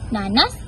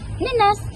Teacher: Dalam sebutan lisan, bunyi a pada suku kata pertama kadang-kadang berubah menjadi e pepet